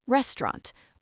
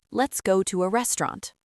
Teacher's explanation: Almost two syllables. The middle collapses.